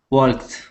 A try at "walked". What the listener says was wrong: Now the L is silent. You're saying walked. Okay. The L is silent. We only pronounce an ah sound. Walked.